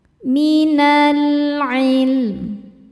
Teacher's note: Sebab alif lam menghadapi huruf qamariah yaitu ain. Cara bacanya lam sukun dibaca izhar atau jelas maka disebut izhar qamari. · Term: alif lam qamariyah